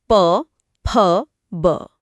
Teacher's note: यहां से ओष्ठय ध्वनियां निकलती हैं। जाहिर है इनमें दोनों होठों का इस्तेमाल होता है।